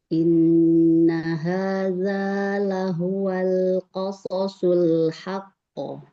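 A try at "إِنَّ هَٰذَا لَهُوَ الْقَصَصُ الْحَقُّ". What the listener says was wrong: Ya, lam sukun ditahan lagi sedikit. Huwal qasasul haqqo.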